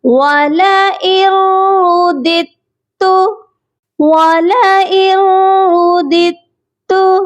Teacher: جب بھی نون ساکن کے بعد حروف یرملون کے لام اور را آ جائے تو غنہ نہیں کیا جاتا، صرف ادغام کیا جاتا ہے۔ آپ نے والا ان نہیں پڑھنا، والا ار۔